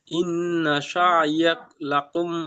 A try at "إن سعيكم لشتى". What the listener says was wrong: লাকুম নয়, ভালো করে দেখেন। ইন্না সা'য়াকুম, ইন্না সা'য়াকুম, এখানে লাভ নেই। ইন্না সা'য়াকুম লাশাত্তা।